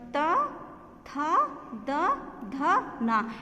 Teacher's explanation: इन वर्णों को बोलने के लिए ये जो हमारी जीभ है वो दांत पर आकर रुकती है और वहाँ पर जो प्राणवायु वहाँ रुकती है, फिर शब्दों वर्णों का निर्माण होता है। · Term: दंत्य